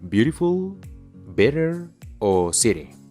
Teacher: cuando los nativos pronuncian la T en inglés a veces suena como una R suave